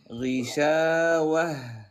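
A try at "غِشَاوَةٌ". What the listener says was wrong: لا هذا هواء ما بعدت ضيقت الحبال الصوتيه ضيق الحبال الصوتيه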